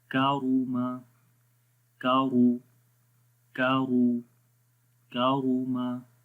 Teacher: آگے ہے کاف زبر کا, را پیش رو, کارو, میم زبر ما, کاروما, کاف کو باریک پڑھیں گے, را کو موٹا پڑھیں گے